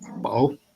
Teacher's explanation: So it's bao with a rising tone in both Sanqiao and Caidiwan.